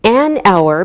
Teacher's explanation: we say an hour because we don't pronounce the H so it sounds like a vowel sound